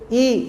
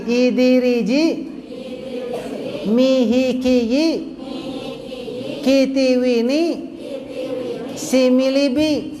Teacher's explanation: Vokal I kita itu memperlihatkan bibir yang nyengir, bukan pecah-pecah.